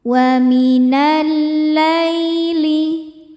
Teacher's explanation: Jadi jika lamnya ini bertasydid sebetulnya lamnya ada 2, lam sukun dan lam fathah. Yang sukun tidak dibaca, masuk langsung ke yang fathah. Jadi diidghamkan atau dimasukkan bacanya. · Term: alif lam syamsiyah